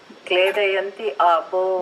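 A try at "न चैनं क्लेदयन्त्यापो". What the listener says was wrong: But don't read it like that. It should be read together. Understanding the meaning, Kledayandi Apo. But while reading, Kledayandi Apo. Na chainam Kledayandi Apo.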